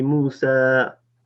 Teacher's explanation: What do I say? Okay, because there's a ya at the end, and with the alif, it's a slight stretching.